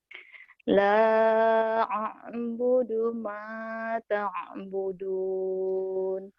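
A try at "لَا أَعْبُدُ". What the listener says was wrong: La ini kurang mantep tuh kalau huruf matinya tuh kamu. Kurang ainnya kurang ain matinya kamu.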